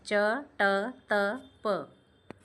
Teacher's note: च वर्ग जो है यह तालु ट वर्ग मूर्धा या मूर्धन्य त वर्ग दंत और प वर्ग ओष्ठ के अंतर्गत आएगा।